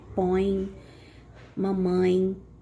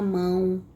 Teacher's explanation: nariz para pronunciar o põe mamãe tá a mão tá bom o ar sai todo pelo nariz tá bom Por isso que a gente chama de vogal nasal